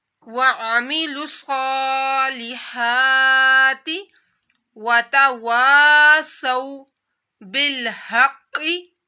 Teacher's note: بالحق قاف کو موٹا پڑا جائے گا، حروف مستعلیہ میں سے ہے.